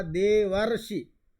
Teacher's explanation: तो ये देवर्षि में अर की ध्वनि आ रही है जो अर अकार और ऋकार के स्थान में हुआ है